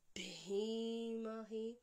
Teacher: Long E followed by short E.